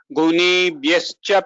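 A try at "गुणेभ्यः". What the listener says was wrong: Gunebhyaha, guna, it is different from na. So the gune, na should be curl the tongue more for na. This na here in drashtanupashyati, this na is softer.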